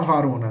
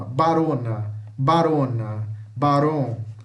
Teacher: A gente escreve V, mas fala B.